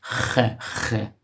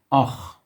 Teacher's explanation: As if you're clearing your throat and you have an itch.